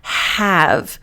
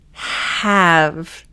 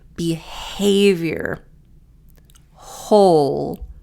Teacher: So you should feel it in your throat. It's very breathy. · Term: the H